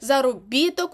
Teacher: заробіток у нас буде на і